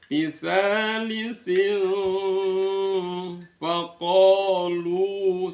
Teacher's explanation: Kalau bisalisin di sana ada kasrotan bertemu dengan fa, maka dibaca ikhfa. Bunyi n-nya disamarkan antara nun sama fa, seolah-olah ada bunyi mim ya, tapi bukan bunyi mim